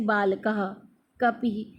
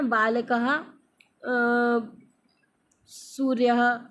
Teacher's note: Next हम देखेंगे विसर्ग। विसर्ग माने ह की आवाज़ देता है, आधे ह की आवाज़